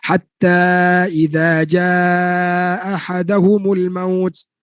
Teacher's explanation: mana hamzah yang kedua hilang, telah diidghamkan dalam ha. Itu yang dikatakan kesalahan mengidghamkan huruf hamzah ke dalam ha.